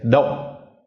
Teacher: we have to put a glottal stop in it. So we kind of cut all our air off like halfway through the word. So we don't say dom, we say dom.